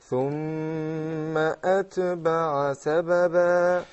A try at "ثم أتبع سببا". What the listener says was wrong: The ta, yes, it's a hamst letter, but not to the point that you shake it like a qalqala. is not أتبع, it is أتبع.